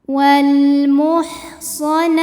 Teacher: Ada hukum alif lam yang dinamakan dengan alif lam qamariyah, karena alif lam menghadapi huruf qamariyah yaitu huruf mim, maka lam sukun kita bunyikan dengan jelas.